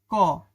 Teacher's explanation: ক জীবটা তোমার তালুর সাথে স্পর্শ হইছে। এই ক এর জন্য হইছে এটা তালেব্য ব্যঞ্জন ধ্বনি।